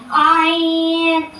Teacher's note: حلق کے درمیان والے حصے سے ادا ہوتا ہے